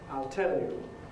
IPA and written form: aɪl ˈtel ju (I'll tell you)